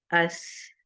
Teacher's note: ये सिर्फ एयर है, यहाँ पे वोकल कोड को जहमत नहीं दे रहे हैं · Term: सीन